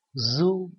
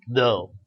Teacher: Z is made with the tip on the blade of the tongue close to the center of the alvolar ridge. D is made with a tongue tip near the upper teeth. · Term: Z sound